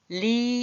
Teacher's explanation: 혀가 말리면서 리 할 때 이 혀가 이렇게 나가서 말리면서 입천장에 닿나요? 그러면서 리 이렇게 소리가 나요.